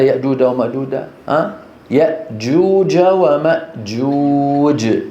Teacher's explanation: الجيم وسط مخرجها من وسط اللسان مع الحنك الاعلى